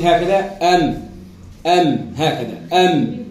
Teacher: لابد أن تحط نفس الشفة العليا على الشفة السفلى من غير ضغط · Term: حرف الميم